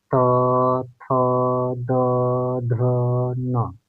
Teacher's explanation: यानी कि हम लोग के दांतों में सीधे हवा टच हो रही है दांत से, उसके बाद बाहर निकल रही है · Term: दंत्य